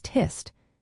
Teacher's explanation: Take the New Zealand accent where the word test is often said as tist. Changing the e sound to an i.